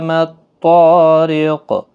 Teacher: تو حروف مستعلیہ ہے، پر پڑھا جائے گا، را زیر کی وجہ سے باریک ہوگا، اور وقف کی صورت میں قاف ساکن جب ہوگا تو اس پر قلقلہ ہوگا